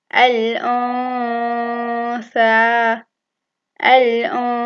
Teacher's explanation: There is a Ghunna for two counts. The Noon sound is concealed. It's not merged.